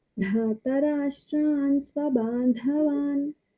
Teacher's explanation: Dhartarashtan dha mahaprana, bandhavan ba alpa prana.